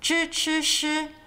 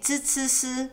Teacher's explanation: Some people like to really emphasize the tongue rolling, zhi, chi, shi. Others have more flat tongues, and they say zi, ci, si, which can confuse some people because that's basically how you pronounce the dental sibilant initials, which we're going to cover next.